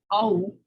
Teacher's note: So if you have au, which is falling sonority, because a is really loud and u is less loud, that's one syllable